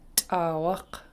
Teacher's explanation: Let's look at the first half of the word. It's a pinched T. If you see an apostrophe after a consonant, that tells you to pinch it. And you basically are snapping it. You're snapping your teeth on it, making it sound sharper.